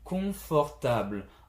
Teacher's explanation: in French confortable, I go down with the last syllable